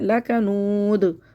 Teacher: देखिए लक़ बहुत लक़ पढ़ना है, लाम को भी मोटा कर देते हैं, काफ को भी मोटा पढ़ देते हैं, क़ौफ बन जाता है ये, इसको बारीक करना है, लकनूद, लकनूद, वाव को बिल्कुल होठ गोल करना है, और दाल पर कलकला करना है